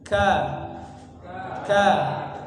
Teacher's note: kalau huruf Kaf ini ada sifat hams jadi udara itu mengalir ka ka ka tapi jangan jangan terlalu maju pangkal lidahnya jangan